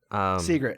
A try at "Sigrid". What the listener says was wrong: Secret, sorry. Secret. Secret. It's like you're saying secret. You're saying it quick. Sigrid. Sigrid.